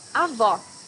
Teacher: you need to hear the sound of the last o in the syllable it should be an open o